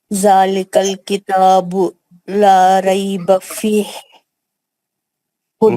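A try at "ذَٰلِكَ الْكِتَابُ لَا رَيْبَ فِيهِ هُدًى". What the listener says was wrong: نہیں اس کو تھوڑا کھینچنا ہے، اس میں مد عارض بھی ہو جائے گا نا، فی ہاں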